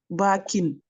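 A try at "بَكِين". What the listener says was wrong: C'est ça. Bakin. Ahsanti.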